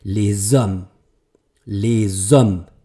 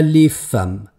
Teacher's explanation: hat ein stummes h die Aussprache ist tatsächlich om und deswegen nehme ich mein S von dem le jetzt mit mache es eben wieder stimmhaft